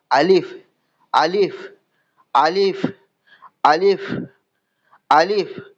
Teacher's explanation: মুখের খালি অংশ থেকে উচ্চারিত হয়, মুখের ভেতরের খালি অংশ থেকে উচ্চারিত হয়, মাঝখানে যে খালি অংশ আছে সেই খালি অংশ থেকে উচ্চারিত হয় আলিফ, আলিফ, আলিফ, আলিফ, আলিফ।